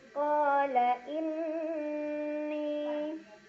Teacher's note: Qala inni ada gunnah musyaddadah karena ada nun yang bertasydid. Cara bacanya didengungkan, ditahan kurang lebih 2 harokat.